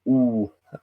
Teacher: So the ooh would be nasalized, ooh, like kind of like you often nasalize your vowels in French, for example.